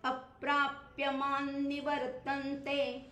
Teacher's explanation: अप्राप्य म्हणताना सुद्धा अ वर जरासा मी जोर दिला कारण जोडाक्षर आहे ना आणि जोडाक्षराच्या अलीकडे जे लघु अक्षर येतं त्याच्यावर जरासा जोर द्यायचा